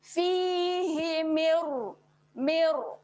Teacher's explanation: Tidak ada bunyi min, dia terus masuk ke dalam huruf ra. Mir, mir. Okay, ini adalah bacaan asimilasi ataupun saya kata bacaan gabung.